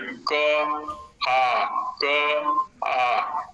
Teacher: कंठबिल एकदम खुला हुआ है। क में ऐसा नहीं है, जब व्यंजन का उच्चारण कर रहे हैं क में स्पर्श हो रहा है, आ एकदम खुल गया, आ प्लुत में मात्रा काल बढ़ जाएगा, स्थान वही रहेगा, प्रयत्न वही रहेगा, जो उसका उच्चारण क्रिया का काल है वो बढ़ गया, एक मात्रा और अधिक हो गया।